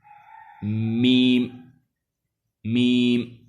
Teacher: دونوں ہونٹوں کا جب خشک حصہ ملتا ہے تو وہاں سے میم ادا ہوتی ہے، یہ میم کا مخرج ہے، یعنی ایسے میم میم، یعنی یہ باہر والا حصہ جو ہے، یہ سامنے ہونٹوں کا جو حصہ ہے اوپر والے کا بھی، یہ دونوں ملنے سے میم ادا ہوتی ہے۔